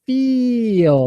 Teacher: feel it's like this long e sound feel feel we want to stretch that vowel sound out longer